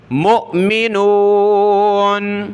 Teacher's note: حمزہ ساکنہ جھٹکا دیں گے